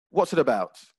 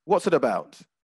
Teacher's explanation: they're written as four separate words but in speaking they'd be spoken almost as if it was one word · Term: liaison